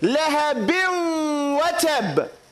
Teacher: We're going to drop this noon sound and enter it into this waw. And so we're going to say lahabin watab. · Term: idgham